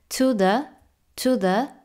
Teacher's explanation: un símbolo flojito O sea no se flexiona mucho la boca Más bien es un sonido cerradito